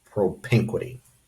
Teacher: propinquity, the second of the four syllables is stressed, so the apostrophe goes after the N.